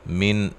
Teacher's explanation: یہاں نون ساکن کا اظہار ہے، غنہ نہیں کریں گے